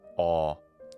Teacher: vowel letter called Omega in English a that's its sound a an open mid back vowel